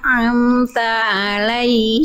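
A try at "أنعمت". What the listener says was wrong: stop satu hal nun sukun jangan diputus ibu inta heeh anam ngalir dikit suaranya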